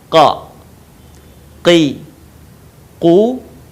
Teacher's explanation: Huruf ini keluar dengan menyentuhkan pangkal lisan kita dengan langit-langit bagian belakang. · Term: huruf qa